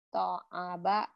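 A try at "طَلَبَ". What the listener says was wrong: Nggak mungkin kalau alif di tengah ya. Alif nggak mungkin di tengah. Tolaba. Tolaba.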